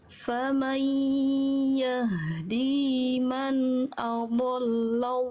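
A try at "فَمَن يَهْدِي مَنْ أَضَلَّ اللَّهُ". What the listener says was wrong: Oke, bagus.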